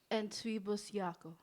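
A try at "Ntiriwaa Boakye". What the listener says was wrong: It's like the TW is not like a twee. It's pronounced like a CHWI. Entry. Bosiako.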